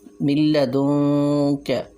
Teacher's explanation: اب یہاں نون ساکن کے بعد لام ہے تو ہم نے یہاں بغیر غنہ کے ادغام کیا، میم کو لام کے ساتھ ملایا۔